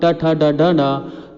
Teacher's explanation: तो ये मूर्धन्य से इसका उच्चारण होता है